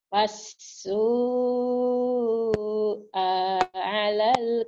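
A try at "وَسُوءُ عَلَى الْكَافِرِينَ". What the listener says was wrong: pendek. Pendek. Hanya pendek. Wasu'a 'alal kafirin, Ibu. Wasu'a 'alal kafirin. Tinggal tasydid-tasydidnya aja nih.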